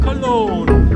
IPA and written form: kəˈloʊn (Cologne)